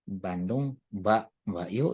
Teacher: Yang de itu kita sebut dengan pre-nasalized stop ya. Jadi bunyi nasal sebelum bunyi letupan. Bunyi nasalnya en, letupannya de.